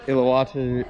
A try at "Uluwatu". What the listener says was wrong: With a U, Uluwatu. You said Iluwatu.